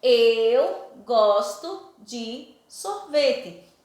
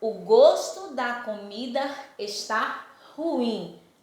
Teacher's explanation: Tem a mesma escrita do exemplo 2, mas é pronunciado de maneira diferente. O som do go é mais aberto. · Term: som aberto